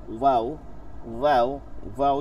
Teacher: এই তিনটা উচ্চারিত হয় ঠোঁট গোল করে, মুখ খোলা রাখিয়া